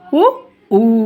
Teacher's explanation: పై పెదవి కింది పెదవి రెండిటితోటి మనం పలుకుతాము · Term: ఓష్ట్యాలు